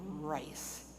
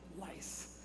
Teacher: the apache language does not have an r sound so they can't say rice it always comes out lice